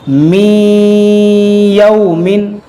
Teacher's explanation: نون ساکن کے بعد یا ہے, یہاں پر بھی ادغام ہوگا, نون کو یا میں داخل کریں گے. می یومن, میم نون واو زیر میو, واو زبر وا میو وا, لام یا زیر لی میو ولی, یا دو زیر ین میو ولی.